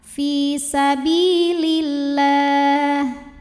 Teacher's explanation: Fi sabilillah, lam pada lafaz Allah dibunyikan secara tarqiq sebab huruf sebelumnya berbaris kasroh, maka lam ini bacanya tipis · Kemudian alif lamnya dinamakan dengan alif lam syamsiyah, karena alif lam menghadapi huruf syamsiyah yaitu huruf lam, maka alif lam tidak dibaca